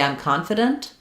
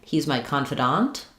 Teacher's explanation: in confident, we stress the con syllable. In confidant, we stress the dant syllable.